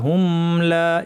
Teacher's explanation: হুমলা একটু টাইম দিব মিমকে, কারণ মিমের আওয়াজটা কিছুক্ষণ জারি থাকবে, তাওয়াসুত বলা হয়।